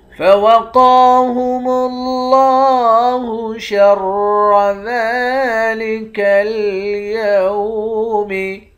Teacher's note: قاف کو موٹا پڑھیں گے، ایک الف کی مقدار کھینچ کر پڑھیں گے۔ لفظ اللہ کے لام کے اوپر کھڑا زبر ہے، لفظ اللہ کے لام کو موٹا بھی پڑھیں گے، ایک الف کی مقدار کھینچ کر بھی پڑھیں گے۔